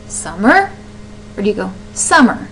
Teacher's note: You can hear that stress at the very beginning of the word.